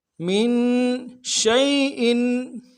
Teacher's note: شین کو واضح کریں گے, تفشی ہے